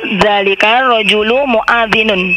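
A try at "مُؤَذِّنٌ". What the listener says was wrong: Naam, mu'adzinun. Tidak ada yang panjang di situ. Mu'adzinun.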